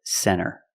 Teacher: Our first example is NT. When you see NT, a lot of times you don't hear the T. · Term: the T is silent